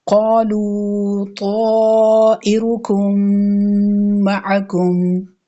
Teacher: میم ساکن کے بعد میم مشدد ہے، دونوں میم کو ملاتے ہوئے غنہ کرنا ہے، اس کو ادغام شفوی کہتے ہیں۔